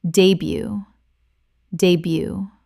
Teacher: Two syllables and the t at the end is completely silent.